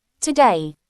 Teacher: The accent is on the second syllable.